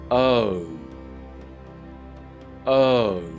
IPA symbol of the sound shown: əʊ